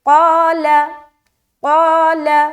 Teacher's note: آگے قال، قاف الف زبر قا، لام زبر لا، قال، قا کو موٹا کھینچتے ہوئے رکھیں گے اور لام زبر لا اس کو باریک ادا کریں گے